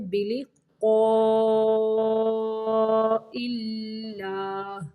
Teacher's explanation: کذبوا بلقاء اللہ، قاف کو موٹا پڑھنا ہے، بلقاء اللہ، اللہ کا لام یہاں پہ باریک پڑھیں گے